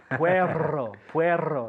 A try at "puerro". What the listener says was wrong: Yeah, puerro.